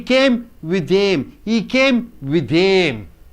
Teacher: See, with them, it changes into with them. With them, it ends with the th, starts with the th. Only one th is enough to be pronounced.